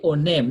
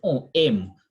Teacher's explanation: You read it like it is one word. That's what we call liaison, slurring of words, linking of words.